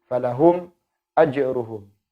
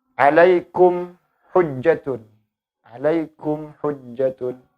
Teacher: Jadi cara membacanya dibaca dengan jelas. Makhraj mim keluar dari makhraj mim secara sempurna, kemudian huruf idhar syafawi yaitu huruf hamzahnya juga dibaca secara jelas, tidak ditahan, kemudian tidak didengungkan.